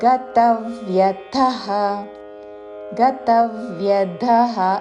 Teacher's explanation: తా మీద ఆఘాత చివరిలో మహాప్రాణాక్షము థ